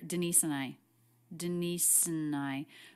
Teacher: the word and is reduced it's just an n sound quick schwa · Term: reduction